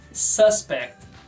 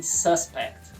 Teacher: Ele é o principal suspeito, sílaba tônica é a primeira